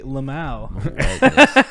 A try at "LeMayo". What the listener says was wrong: No, not Lamau, not like Dead Mao 5. They'd say LeMayo. You got to go LeMayo, not Lamau. You did drop a syllable.